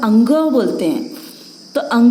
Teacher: जब अगर हम लोग अंग बोलते हैं तो हम कंठ का प्रयोग तो कर रहे हैं, साथ में इसके साथ में हम लोग नाक का प्रयोग भी करते हैं, नासिका का प्रयोग भी करते हैं, इसलिए इसका उच्चारण स्थान हुआ कंठ प्लस नासिका। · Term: नासिक्य